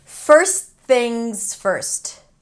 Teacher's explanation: When the t appears between two consonants, it's okay to drop it.